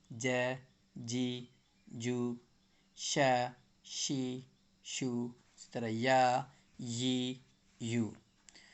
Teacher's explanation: زبان کے بیچ حصے سے نکلنے والے حروفیں 3 ہیں